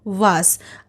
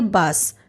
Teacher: पे दिए गए हैं तो विशेषकर आपको याद रखना है कि व का उच्चारण स्थान दंतोर है यानी कि दांत और ओठ वहीं ब का उच्चारण दोनों ओठों के मेल से